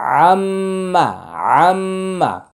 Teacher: ওয়াজিব গুন্না মিমের গুন্না মুখ বন্ধ